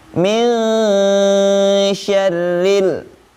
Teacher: Maka huruf nunnya itu disamarkan ya dengan huruf shinnya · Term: ikhfa